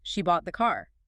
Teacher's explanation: Stress on bought implies she didn't rent it or steal it.